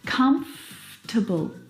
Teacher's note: this word just like vegetable has an extra vowel in there that we don't need to pronounce